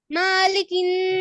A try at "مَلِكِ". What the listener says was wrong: মাতে টান হয়ে গেল মালিকিন